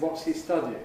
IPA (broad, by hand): ˈwɒts hi ˋ_stʌd_iɪŋ